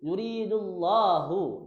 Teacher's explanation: Karena sebelum lafaz Allah berbaris dhammah atau fathah, dibaca tafhim atau tebal. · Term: lam jalalah tafhim